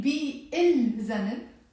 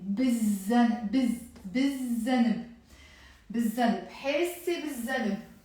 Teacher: So whenever you have words starting with the letter dhal or any other sun letter, and you want to add before it the definite article il, which is the, you don't end up pronouncing this l here, the lam, as if it's not there. So instead of saying bi il zanab, we will end up saying immediately, as if it's not here, we will say bizzanab, bizzanab, bizzanab, hesse bizzanab.